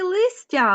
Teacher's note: щедрий звук ть ділиться м'якістю зі звуком с